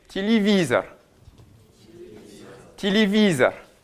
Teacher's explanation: On va avoir un i qui, lui, va être bien accentué, et on va avoir un o qui va s'ouvrir puisqu'il n'est pas sous l'accent.